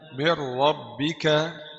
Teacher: نون ساكنة مدغمة في الراء المفتوحة بغير غنة